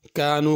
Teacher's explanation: کانو کا کاف بھی چھوٹا ہے، یکسبون کا کاف بھی چھوٹا ہے، اس کو بڑا قاف نہیں پڑھنا